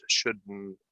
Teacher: And the end of that word comes out of your nose